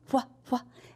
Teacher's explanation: if you put your hand in front of your mouth, wah, wah, it's almost like blowing out a little candle